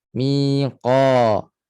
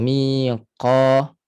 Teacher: Jahar ataupun majhur, nafas tersekat. Jadi tak boleh berangin lah.